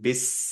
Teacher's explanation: বিস যখন বলবো তখন আমাদের একটু টাইমও দিতে হবে, বাতাসও বের করতে হবে।